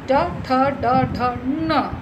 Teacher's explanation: so our tongue is touching मूर्धा टू pronounce this वर्ण सो मूर्धन्य